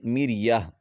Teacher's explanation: گول تا جو ہے جب اس پر وقف کرتے ہیں تو اس کو ہا پڑھا جاتا ہے، تو مریتن سے مریہ۔